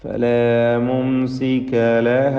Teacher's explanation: സാക്കിന മീമ് വരുന്നു, സുക്കൂൻ നൽകപ്പെട്ട മീം. അതിനെ ഇൽഹാർ ഷഫവി നൽകി മണിക്കാതെ വെളിവാക്കണം.